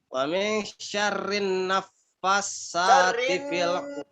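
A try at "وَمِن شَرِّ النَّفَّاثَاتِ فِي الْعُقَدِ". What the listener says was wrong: apa non tasdid kan? Apa sih sama tapi tajwidnya berantakan tuh gimana? Harus diperhatikan.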